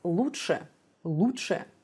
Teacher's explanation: it's like a flap T in English but the tip of your tongue should be lower